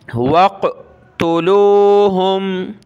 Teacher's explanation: قاف کو موٹا کریں گے اور اس کے اوپر یہ جزم کا جو کلر ہے یہ آپ نے دیکھا ہے، قلقلہ کا ہوتا ہے، تو اس کو قاف کو ہم نے قلقلہ کی طرح پڑھنا ہے۔